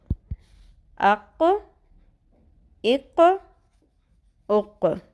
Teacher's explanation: ٹھیک ہے، اور اس کو عربی میں لحات کہتے ہیں. ٹھیک ہے، تو ہماری زبان کی جڑ ٹکرائے گی اوپر لحات کے قریب نرم تالو سے، یعنی کہ بالکل اس کوے کے قریب والے تالو سے جو سافٹ والا حصہ ہے اس سے ٹکرائے گی تو قوف ادا ہوگا. · تو آپ نے خود ہی نوٹ کیا کہ اس کے اندر ہم نے ایک اور صفت ہے قوف کی کہ ہم نے اس پہ قلقلہ بھی کرنا ہے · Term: قوف کا مخرج